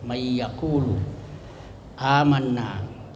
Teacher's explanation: yaqulu dengan amanna itu ada panjang dua harakat atau satu alif